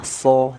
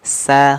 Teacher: Nah, perbedaan cara mengeluarkan hurufnya, huruf shad dan huruf sin, dia di ketebalan huruf. Huruf shad memiliki sifat ataupun karakter tafkhim, huruf sin karakternya istifal ataupun tarqiq, tipis.